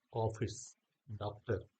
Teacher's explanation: तो यह आ और ओ के मध्य की ध्वनि है। · जैसे ऑफिस डॉक्टर तो देखिए ऑफिस नहीं कह रहा हूं मैं डॉक्टर नहीं कह रहा हूं ऑफिस डॉक्टर और ना ही हम इसको ऑफिस कह रहे हैं या इसको डॉक्टर नहीं कह रहे तो ना तो हम क्या कह रहे हैं ना तो हम आ की मात्रा पूरी बोल रहे हैं और ना ही हम ओ की मात्रा पूरी बोल रहे हैं। · छोटा ओ देखिए कैसे हम इसको बोलते हैं अंग्रेजी में डॉट ओपन ओ साउंड ना तो अ ना ही आ और ना ही ओ इसके बीच में हल्का सा आ और ओ के बीच का ध्वनि निकालते हुए · आ और ओ के मध्य की ध्वनि है। अंग्रेजी के जो शब्द हमारे यहाँ लिखे जाते हैं, हूबहू हिंदी में बोले भी जाते हैं। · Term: अर्धचंद्र